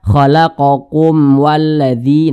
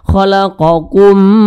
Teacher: Mim ini sukun berjumpa dengan huruf wa. Maka hukumnya adalah izhar syafawi, bacanya tidak didengungkan.